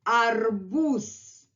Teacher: only at the end of the word ze becomes voiceless